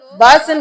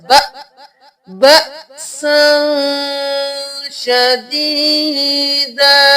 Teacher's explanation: ہم نے یہاں پر حمزہ کو جھٹکا دینا ہے کیونکہ اس کے اوپر جزم ہے، با زبر حمزہ با، بأسا شدیدا، یہاں سے دیکھیں قیما لینذر بأسا شدیدا من لدنہ، من لدنہ نہیں کرنا، میم کو لام کے ساتھ ملائیں گے، من لدنہ ویبشر المؤمنین۔